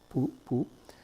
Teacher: If you pronounce that word, you'll notice that for the P sound at the beginning, your lips come together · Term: lip sounds